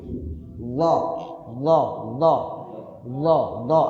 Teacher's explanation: lidah kita bagian depan ketemu gigi bagian atas ujungnya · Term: huruf d